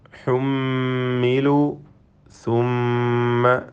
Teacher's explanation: അഞ്ചാമത്തെ വചനത്തിൽ ഹുമ്മിലു സുമ്മ ഈ രണ്ട് പദത്തിലും വന്ന മീം മുഷദ്ദദ ഷദ്ദ നൽകപ്പെട്ട മീമിനെ മണിച്ചുകൊണ്ട് ഉച്ചരിക്കണം